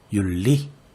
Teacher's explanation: 뒤에 있는 리을이 이겨서 앞에 있는 니은이 리을로 바뀌어야죠. 이렇게 윤리. 설 더하기 날도 이해할 수 있겠죠? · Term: 역행동화